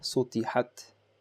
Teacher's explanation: A little bit of air comes out on ta